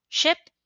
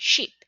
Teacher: In phonetics, the difference between ship and sheep lies in the vowel sounds. Ship uses the short I sound, while sheep uses the long E sound.